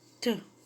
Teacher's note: The phoneme T has alveolar articulation point, that is, the tongue comes into contact with the upper alveoli.